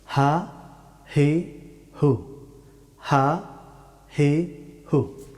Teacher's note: হা হরফটি উচ্চারিত হয় গলার একেবারে নিচের অংশ থেকে